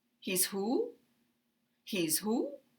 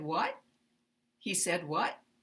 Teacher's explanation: have the wh question moved to the end then we're going to have Rising intonation